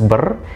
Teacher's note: Sedangkan pada morfem berwujud urutan fonem dapat kita lihat pada morfem yang terdiri atas beberapa fonem, seperti prefiks ber yang terdiri atas fonem bilabial b, vokal tengah sedang e, dan konsonan getar r